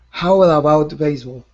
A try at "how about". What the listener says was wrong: Okay, you're adding that that R sound in there. How to. Instead of how to, it's how about.